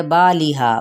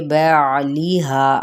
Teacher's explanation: اب بعض لوگ کیا کرتے ہیں، با لیہا، با نہیں ہے یہ بعلیہا، عین کو بھی آپ نے وسط حلق سے ادا کرنا ہے۔ ہاں پہ الف مدہ کا قاعدہ ہو رہا ہے جس کو ایک الف کے برابر کھینچیں گے۔